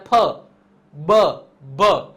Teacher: ફ બ ભ આ ચારે ચાર એવા છે જેમાં હોઠ છે એ ભેગા કરવા પડે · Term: ઓષ્ટ્ય